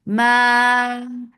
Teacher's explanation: make it 4 counts long, and the long vowel should not go into your nose. Meme, yes, it is a nasal letter, so the sound of meme will go into your nose, but not the long sound. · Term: Mad munfasil jaiz